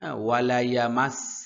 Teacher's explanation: ওয়াও দুই ঠোঁট গোল হবে